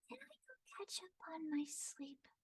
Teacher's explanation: But also a lot of stuff sounds sleepy because she's tired. She ends sentences on the lower end.